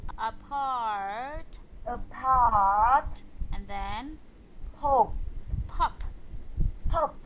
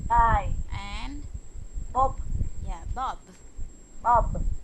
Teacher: And the first two rows, these are opposite sounds. The first row is what we call the unvoiced, unvoiced, and the second one is the voiced.